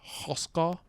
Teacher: it has some very prominent uvulars, which make any a vowel next to them just pull back to aw. So we have Hoska.